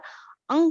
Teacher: क्योंकि अंग का जो उच्चारण है वो नाक से होता है। अंग का उच्चारण नाक से होने के कारण इसको बोलते हैं अनुस्वार